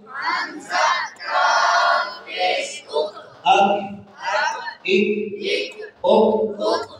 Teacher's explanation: جب زبان کی جڑ اوپر والے تالو کے سخت حصے کے ساتھ لگتی ہے تو کاف ادا ہوتا ہے